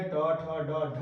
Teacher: मूर्धा, टवर्ग जितने भी है, ट ठ ड ढ और री मूर्धन्य स और र, ये सभी मूर्धा से बोले जाएंगे